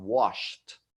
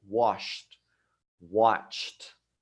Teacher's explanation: So you're not going to say the D sound like in murmured. You're going to say a T sound at the end as in wash.